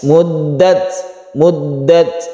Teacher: karena sebelumnya ada fathah maka kita sebut tafkhim atau tebal muddat ini tidak panjang juga langsung ke sukun ta dan lelehkan sedikit seperti huruf s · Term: sifat Hames